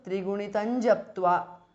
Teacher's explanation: japtva belongs to the begins with ja, which is a part of the cha varga. So the anuswara changes to nya. So trigunitan japtva because of sandhi.